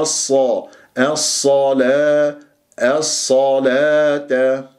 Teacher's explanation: اللام شمسية، لام جاء بعدها حرف مشدد، الصاد مشددة بفتح مفخمة مرتبة ثانية، ولا أقول الصو، لا تكور الشفة، الصلاة، الصلاة، لاحظتم؟